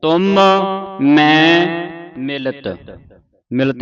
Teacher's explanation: ਇੱਥੇ ਤਿੰਨ ਮਮ ਇਕੱਠੇ ਆਏ ਨੇ ਤੇ ਤਿੰਨੇ ਮਮੇ ਪੂਰੇ ਲੱਗੇ ਨੇ ਪੂਰੇ ਬੋਲ ਕੇ ਜਾਣੇ